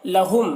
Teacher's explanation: ادغام شفوی کا مطلب یہاں پر یہ ہے کہ گنہ کے ساتھ پڑھنا ہے اور میم کو میم سے ملا کر، میم کو میم سے ملا کر پڑھنے کا مطلب یہ ہے کہ اس میم ساکن کو نہیں پڑھیں گے، ٹھیک ہے۔